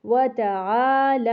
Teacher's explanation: کا جو کھڑا زبر ہے اس کو لمبا نہیں کرتے، تو جتنا لمبا آپ نے تعا کو کرنا ہے اتنا ہی زبر آپ نے لا کا لمبا کرنا ہے